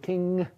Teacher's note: Or velar nasal, like at the end of king, Yeah, you're making a closure at the velum, but you're also lowering the velum and letting the air flow through